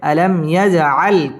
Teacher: জিম কলকলার হরফ ধাক্কা দিয়ে পড়তে হবে। আলাম ইয়াজআল কাই জবরের বাম পাশে জজম আলাইয়া লিনের হরফ তাড়াতাড়ি পড়তে হবে।